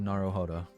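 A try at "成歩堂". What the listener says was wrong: I mean, if you really want to be technical, the R is more of a D. It's Naruhodo.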